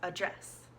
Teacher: But in the verb, it becomes address, like a U almost, address. And we're emphasizing the dress in this word.